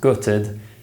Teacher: I found out I failed the exam note that this word may be pronounced gutted in accents which lack the foot strut split such as in the north of England